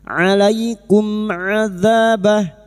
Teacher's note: Mim sukun bertemu ain idhar syafawi. Mim sukun dibaca jelas tanpa mendengung. Bertemunya mim sukun dengan huruf hijaiyah selain mim dan ba.